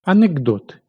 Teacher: Чуємо дзвінкий звук «г». Під впливом дзвінкого «д» глухий «к» одзвінчується, перетворюється на дзвінкий «г».